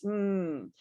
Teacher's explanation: your lips are fully closed, like really hard. And the vibration sound is coming from your neck, right? Your vocal cords.